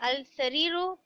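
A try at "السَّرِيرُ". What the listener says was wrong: अच्छा, इसको हम पढ़ेंगे असरीरु अल सरीरी। ठीक है, लाम इसमें साइलेंट है।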